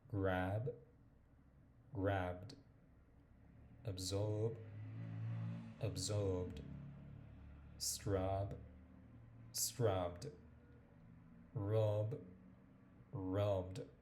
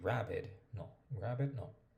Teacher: Tenemos que hacer como juntar los dos sonidos y omitir el sonido de la E y suena la D. La D suena como más, digamos, como más, se nota más, ¿listo? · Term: el ed suena como una D